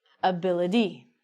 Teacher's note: sometimes as I told you we actually say the T like a d